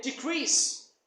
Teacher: as a verb you would stress the second syllable